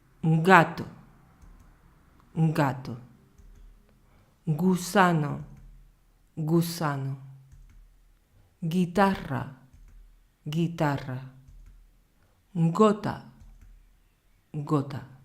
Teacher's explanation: Vamos a ver cómo la parte de atrás de la lengua se eleva y al paso del aire hay una pequeña vibración de las cuerdas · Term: sonido flojo